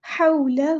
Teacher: یہاں پر الف مد آ گیا، ما حولہ، حولہ نہیں ہے، واؤ پہ مد لین ہوگی، نرمی سے موڑنا ہے